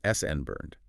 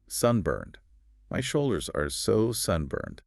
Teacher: The stress is on the first syllable. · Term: word stress